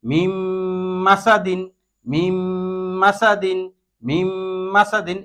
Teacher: এখানে এই নুন সাকিনের পরে মিম আসছে, এই যে মিম, এই নুন সাকিনের পরে মিম আসার কারণে এই নুনকে এই মিমের সাথে মিলাইয়া গুন্নার সহিত পড়তে হবে